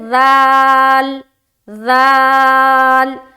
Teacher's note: زبان کی نوک اور ثنایا علیہ کا کنارہ ہے